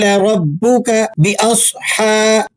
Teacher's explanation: सद को आप मोटा अदा करेंगे। स्वाद का ताल्लुक हुफ मुस्तालिया से है।